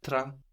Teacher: But it's not just an A or an AI, no. We have an N swallowed into it.